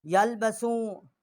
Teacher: جو چھوٹی مد ہے اس کو تین الف جتنا آواز بلند کیا ہے. حمزہ کو لام کے ساتھ مشدد کیا ہے اور شین کو یا کے ساتھ مشدد کیا ہے.